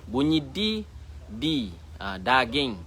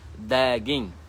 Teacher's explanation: Lidah kita mesti berada di dalam, iaitu pada umbi gigi. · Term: huruf dal